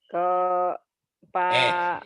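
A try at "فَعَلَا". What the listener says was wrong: Ibu suka lupa titik bu. Itu titiknya satu, fa ya bu ya. Fa'ala. V-nya panjang. Ini panjang semua, Bu. Jadi kalau Ibu nggak tenang, bacaan tuh suka gitu. Tenang aja ya. Fi'ala gitu. Ibu Bapak, kalau giliran dua titiknya dibacanya pi, giliran satu dibacanya dua, kebalik-balik.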